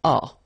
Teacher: The ending for tu will be as. You don't pronounce the s, so you pronounce a.